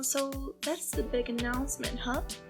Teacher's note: Olha aqui como ele pronuncia announcement, né? Ele quase não fala esse T, né?